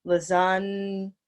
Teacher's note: the G is silent—there’s no need to say a hard G sound there: Lasagna And also, there’s a “ya” sound right here that you’re not looking at in the spelling, but that we say: Lasagna ...